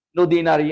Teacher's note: হ্রস্ব ইকার, দীর্ঘ ইকার বানানে পার্থক্য সৃষ্টি করে কিন্তু উচ্চারণে পার্থক্য সৃষ্টি করে না।